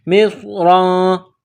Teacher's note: ہے، اہبطو، اہبطو مصرا، میم کو صاد کے ساتھ ملانا ہے، صاد کو موٹا کرنا ہے، صاد میں سیٹی کی آواز پیدا کرنی ہے ، را کے اوپر دو زبر تنوین ہے، مصرا، فإن، تنوین